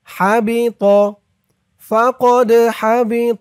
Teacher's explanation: এই দালটা কলকলার হরফ ধাক্কা দিয়ে পড়তে হবে